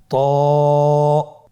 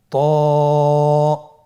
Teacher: জিহ্বার আগা সামনের উপরের 2 দাঁতের গোড়ার সঙ্গে লাগিয়ে উচ্চারিত হয়।